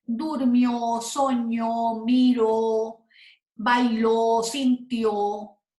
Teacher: la sílaba más fuerte es la última